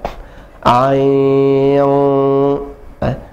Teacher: Kalau kita tutup hidung, dia tidak akan sempurna karena suaranya masuk ke hidung. Ain, tertahan.